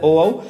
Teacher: ओ औ, कंठोस्ट मीन्स कंठ और ओस्टो से मीन्स होठों से बोला जाता है ओ औ